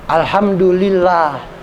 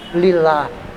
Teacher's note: Jadi bismillah, alhamdulillah, karena huruf sebelumnya kasroh, lillah. Jadi itu apabila huruf sebelum lafadz Allah berharokat kasroh, maka bunyinya lah. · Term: tarkik